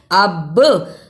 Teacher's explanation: ونقلی، با پیش بو، ونقلب ابصارهم، الف زبر با، اب، با پر جزم، جزم کی صورت میں یہ حرف قلقلہ یعنی آواز پلٹ کر آئی. اب، صاد زبر خا، اسے سین زبر سا نہیں پڑھنا.